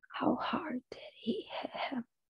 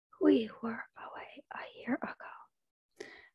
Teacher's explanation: For breathiness, you were rated severely deviant, as well as for loudness, with the nature of the abnormality being noted as soft.